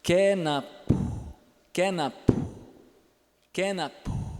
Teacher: A palavra milho nessa língua é kenapu, kenapu, kenapu. Esse U é surdo. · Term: vocóide surdo